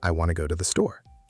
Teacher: Want to becomes wanna, because those words are unstressed and they blend together.